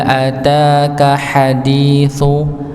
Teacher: ha-nya ditekan ya, karena dia di bagian tengah tenggorokan. Hadi dal, huruf dal, di mana tempat huruf dal ujung lidah bertemu dengan gusi bagian atas.